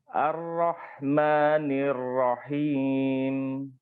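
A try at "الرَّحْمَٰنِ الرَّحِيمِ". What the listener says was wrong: Panjangkan sedikit atau? Himnya. Ar-Rahmanir-Rahim.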